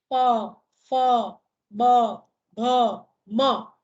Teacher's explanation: નીચલો હોઠ, જે આપણું ઉચ્ચારણ અંગ છે, ઉપલા હોઠને સ્પર્શે અને જે ધ્વનિ પેદા થાય તેને ઓષ્ઠ્ય વ્યંજન કહેવાય